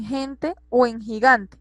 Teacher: la G con la E y la I tienen un sonido gutural fuerte como en gente o en gigante